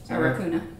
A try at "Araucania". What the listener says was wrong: That's Araucania. That's a CA.